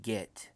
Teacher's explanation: If you concentrate on where the tongue hits on the mouth, it's in the middle of the top of the mouth. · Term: middle mouth